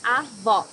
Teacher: Here you need to hear the sound of the last O in the syllable. It should be an open O, as we say in Portuguese.